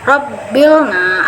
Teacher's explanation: cirinya tebal itu pangkal lidah bagian dalam pangkal lidah harus sampai terangkat